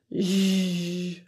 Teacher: The sound is produced very similar to the SH sound, sh, only there's a voicing or vibration to the vocal folds. You can actually feel the vibration on your throat.